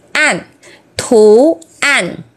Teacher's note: đọc bằng đầu lưỡi và thanh tư đọc xuống